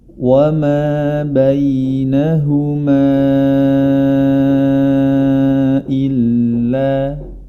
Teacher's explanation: mad asli bertemu dengan hamzah di lain kata dengan dibaca boleh 2, 4 atau 5 harokat. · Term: mad jaiz munfasil